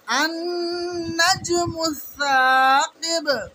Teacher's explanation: সা, সা, ওটাকে একটু টান দিয়ে পড়তে হবে। সাকিব, আমরা যেহেতু সাকিন করছি বাকে, তো ওই কারণে আমরা বা কলকলা করে সাকিন করব